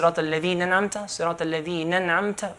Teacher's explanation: skipping the alif, this is called damjul huruf